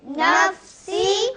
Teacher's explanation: فا کیونکہ حروف قلقلہ میں سے نہیں ہے، اس لیے اس میں لوٹتی ہوئی آواز نہیں آئے گی